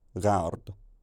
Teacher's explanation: The vowel assimilates to this velarized r, so it's now a diphthong that glides from a front to a back tongue position, gard.